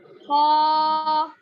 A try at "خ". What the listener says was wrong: خا کی ادائیگی اور تھوڑا صاف ہونا. خا میں کا نہیں سنائی دینا.